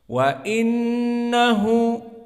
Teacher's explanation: Makhrajnya keluar dari al-khaysum, dari hidung, dan juga dibaca dengan dua harakah, sehingga di sini makhrajnya dari khaysum dan ada panjang dua harakah. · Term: gunnah